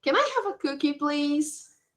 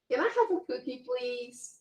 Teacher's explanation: when we make a request in the form of a question our voice also rises at the end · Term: rising tone